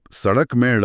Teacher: जब आप सड़क में ड़ बोलते हैं तो जीभ ऊपर मूर्धा को छूकर एक झटके से नीचे आती है। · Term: उत्क्षिप्त